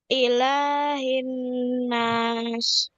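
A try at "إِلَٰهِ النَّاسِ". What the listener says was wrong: Ya, ditahan, ditahan. Ini panjangkan lagi. Diulang.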